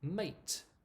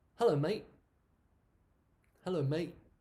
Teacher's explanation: feature of spoken English, where we basically remove the t sound